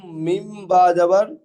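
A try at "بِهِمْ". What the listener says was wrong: বাজের বি, হা মিম জের হিম। মিম বা কেন হবে? যেমন পড়া ঠিক তেমনই পড়া হবে। এখানে বায়ের সঙ্গে এখানে যুক্ত করবেন, বায়ের নিচে জের আছে তো, সাকিন থাকলে তাহলে যুক্ত, তো যুক্ত হবে।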